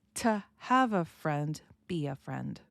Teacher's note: we don't emphasize oo in the to if it's not an important word in the sentence. If it's not an important word, we're going to pronounce it as to have a friend, be a friend.